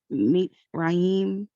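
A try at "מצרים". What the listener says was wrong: It's more of meets, not meetsa, meets.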